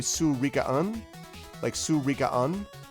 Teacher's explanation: Words ending with an N has the N stressed like it's its own syllable.